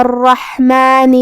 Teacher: حا کو ہم حلق کے درمیان والے حصے سے ادا کریں گے اور جو کہ اس پہ جزم ہے تو ہمیں حا کو ظاہر کرنا ہے. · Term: حرف الحا